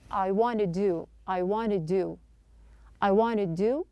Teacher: Not pronouncing two D's here. The first D at the end of wanted is a stop. Then pronounce to with the flap T schwa sound.